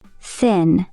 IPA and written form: θɪn (thin)